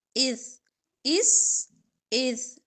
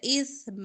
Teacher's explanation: तो सीन में सीटी होती है, सा में सीटी नहीं होती, नरम होता है।